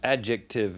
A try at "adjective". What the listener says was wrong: every consonant. I think the C is technically silent.